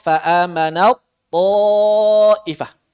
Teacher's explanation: Maka di sini jangan dibaca fa'amanat, jangan. Langsung ke to, taknya lebur. Fa'amanat, langsung ke to, fa'amanat ta'ifah.